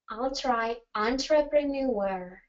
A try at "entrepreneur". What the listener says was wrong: Perfect. Yep. So it's entrepreneur.